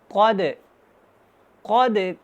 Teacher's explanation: قاف بھی یہاں پہ موٹا ہے اور اس کے بعد جو دال ہے یہ باریک ہے اور دال ساکن ہے تو اس کے اوپر کلکلہ ہوگا